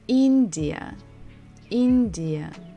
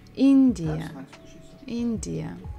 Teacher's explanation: So here we stress the first syllable in India